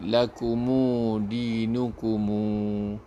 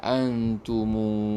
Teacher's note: ada imam yang menghidupkan, menyambung, lepas mim tu ada waw, mad asli. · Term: silah mimul jam'i